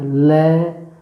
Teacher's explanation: जब ल बोलते हैं तो जिह्वा के दोनों तरफ से हवा बाहर आती है, ल। तो ऐसे करके इसलिए इसको पार्श्विक व्यंजन कहा जाता है।